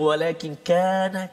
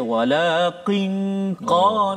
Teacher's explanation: Maknanya lidah kita tu qaf kat depan dia, kaf dekat depan dia, qaf di belakang, dekat dengan anak tekak. So kaf depan dia.